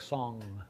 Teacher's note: That's the sound at the end of a word like song, right? Or king. We're making a velar nasal.